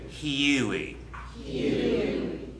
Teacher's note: it's not just oo, it's ew. There's an e before. It's an, again, we're adding a diphthong to normally a simple vowel sound.